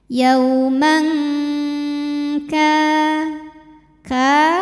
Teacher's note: Lalu ada hukum ikhfa hakiki ab'ad karena ada tanwin fathah menghadapi huruf kaf. Cara bacanya bunyi tanwin disamarkan menuju makhraj huruf kaf disertai dengung. Jadi ini dengungnya besar, langsung masukkan ke makhraj huruf kaf yaitu pangkal lidah ya.